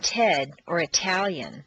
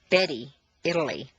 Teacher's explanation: at the top of the staircase T is pronounced t as in Ted or Italian a t in the middle of a staircase is pronounced as D